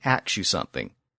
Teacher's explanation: In that English dialect, ask often becomes ax, as in let me ax you something. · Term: metathesis